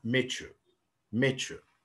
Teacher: لأن التاه جاي بوراها وراها يا. فممكن الاثنين يتحولوا للتش. ده بنسميه coalescent assimilation